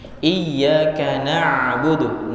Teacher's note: Ya, sifatnya ain dia setengah mengalir. Jadi harus ada aliran. Tidak boleh juga memantul. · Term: sukun ain